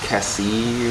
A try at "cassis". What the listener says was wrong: S is silent because French.